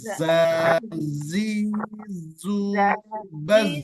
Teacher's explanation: Pada fathah, pada kasroh, dan pada dhammah juga ada sifat sofir. Tapi tidak terlalu jelas.